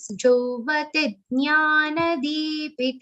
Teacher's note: D will be long, P will be short, T will be long.